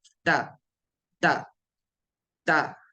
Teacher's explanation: त ता जब आप कहते हैं तो आपकी जबान जो है जबान के इब्तिदा हिस्सा आपके सामने के दांतों के जो मसौड़ी की तरफ थोड़ा सा टच होता है · تا، تا جب آپ کہتے ہیں تو آپ کی زبان جو ہے، زبان کے ابتدائی حصہ آپ کے سامنے کے دانتوں کے جو مسوڑے ہوتے ہیں اس کو ٹچ ہوتا ہے، اس کے پیچھے کی طرف تھوڑا سا ٹچ ہوتا ہے، تا، تا، تا، ٹھیک ہے۔